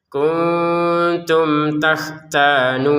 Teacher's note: kun di sini samar, tum bertemu ta dibaca dengan jelas.